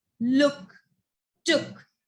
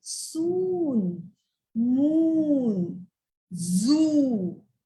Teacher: double O has two sounds. One is called as little oo and one is called as long oo. So the little oo, the words are like b, oo, k, book, h, oo, k, hook, shook, look, took.